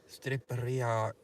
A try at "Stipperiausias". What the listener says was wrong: You're also putting an R in there. It's actually S-T-I-P.